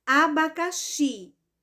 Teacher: ela é oxítona porque a sílaba mais forte é a última sílaba · A sílaba mais forte foi o xi. Portanto, essa palavra abacaxi, a sílaba tônica dela é justamente o xi.